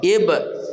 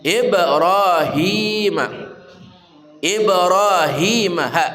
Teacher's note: qalqalah sugra memantul dengan kuat